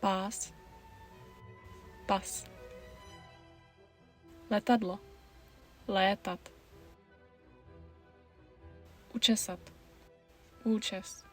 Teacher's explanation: There are five long and five short because Czech uses a supersegmental contrast of vowel duration.